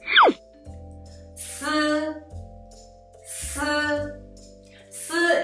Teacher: The position is the same tip of the tongue, but when you pronounce it, the first thing you need to do is let the tongue tip to touch the back of the lower teeth. At the same time, let the air rub out the surface of the tongue and the upper teeth. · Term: the fricative sound